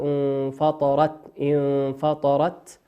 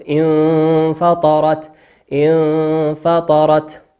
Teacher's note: كأنك تقرأ مخرج الحرف الثاني مع بقاء الغنة في الحرف الأول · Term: الإخفاء